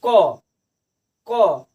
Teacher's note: अब आइए हमारा नेक्स्ट रहता है अल्प प्राण, यानी जिनके उच्चारण में बहुत कम समय लगता हो, यानी जिनके उच्चारण में कम समय लगता हो हम कह सकते हैं, उसे हम क्या कहते हैं अल्प प्राण। यानी जैसे क में बहुत कम समय लग रहा है, तो यह हो गया हमारा अल्प प्राण